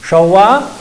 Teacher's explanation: Showa es una pregunta, va con acentuación ascendente.